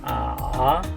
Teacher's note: El tercer tono dijimos que empieza en medio y sube.